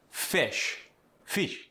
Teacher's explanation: The I goes to A or E. Sit becomes set or seat.